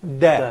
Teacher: you put your tip of the tongue against the alveolar ridge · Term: Dal